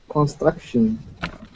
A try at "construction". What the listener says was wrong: Okay, give me a good R there. So instead of saying constra, okay, we want to say construction.